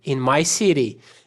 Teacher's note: Lembrando aqui que o T vai ter um sonzinho de R